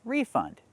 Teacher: We have to put the stress on the first syllable and say refund, making the long E like green beans.